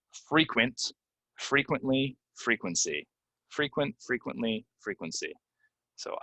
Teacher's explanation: All right, the next couple of words, basically what we have is we have some E's that people, for whatever reason, they want to pronounce them as short E's, but they're really long E's